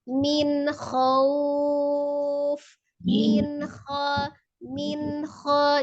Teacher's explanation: nun sukun ketemu dengan huruf ha juga izhar ya baca jelas tetapi Nun nya sempurna